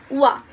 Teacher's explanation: It is articulated by the tongue, assuming the position for a back closed mid to a closed vowel. Lips are rounded and the soft palate is raised, and the vocal cords vibrate. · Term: semi-vowel